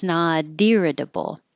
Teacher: that t changes to a d · Now the T in not, that's a D, will connect to the I, and that's what makes it sound like deer, irritable, irritable.